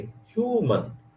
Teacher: इस तरीके से ह्यूमन, ह्यू स्ट्रेस दिया और नीचे आ गए